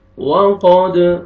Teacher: قاف کو موٹا کر کے پڑھیں گے، دال پہ قلقلہ ڈبل ساؤنڈ آئے گا